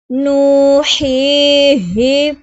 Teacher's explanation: واو ساکن سے پہلے پیش ہے تو واو مدہ ہوگا، ایک الف دو حرکات کے برابر کھینچ کر پڑھیں گے